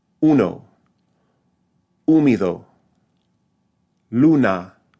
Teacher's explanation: the back vowel, but also a high vowel, is U. U. So it's usually spelled, it's always spelled with just the letter U.